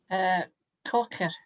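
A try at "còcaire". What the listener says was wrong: Kokere. Kokere. Sound it, as I say, sound the E on the end if you can remember to sound the E's on the Kokere.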